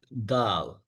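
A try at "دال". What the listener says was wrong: Yes, but not dal. Yani try to be light. Dal.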